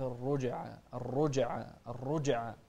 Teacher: ننتبه أيضا للجيم فيها القلقلة طبعا